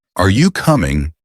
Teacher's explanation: Your voice should rise at the end. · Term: rising and falling intonation